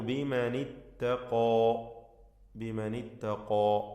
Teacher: ഖാഫും അതിൻ്റെ അലിഫും തഫ്ഖീം ചെയ്തുച്ചരിക്കണം. അലിഫിന് അധികം ദീർഘം കൊടുക്കരുത്.